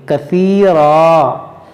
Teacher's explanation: رکیں گے تو اس دو زبر کو ہم الف سے بدلیں گے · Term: وقف مطلق